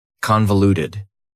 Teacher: That second syllable again has that schwa sound, that reduced vowel sound.